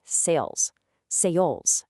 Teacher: It starts with a standard at sound and smoothly glides upward toward an i sound. You hear this dynamic movement perfectly in the word sales.